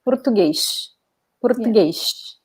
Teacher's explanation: So the S in the end will be pronounced like this sh sound.